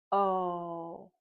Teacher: So we know that O is a voice sound, and when we make it, our mouth is open, our lips are round, our tongue starts at the bottom and then it moves up and to the back